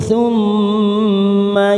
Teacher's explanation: huruf mim yang bertasdid summa, namanya gunnah musaddadah. Kita tekan 3 ketuk.